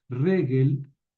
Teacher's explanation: Ojo con el acento en la primera sílaba